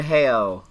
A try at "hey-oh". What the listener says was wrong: You gotta put more emphasis on it.